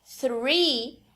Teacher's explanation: muitos brasileiros vão fazer um F ao invés de fazer o th. Só que aí isso se torna outra palavra, que é a palavra free, livre.